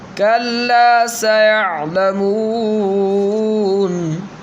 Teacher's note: کلا سیعلمون میں سین حروف صفیریہ میں سے ہے، اسی وجہ سے سیٹی کے ساتھ ادا کیا جائے گا۔